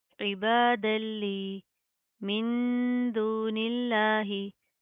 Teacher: तो यहाँ पर हम इख्फा करेंगे, यानी कि अगेन साउंड इन नोज